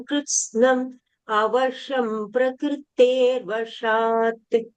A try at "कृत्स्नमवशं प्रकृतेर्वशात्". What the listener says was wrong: கரெக்டா படிச்சல்.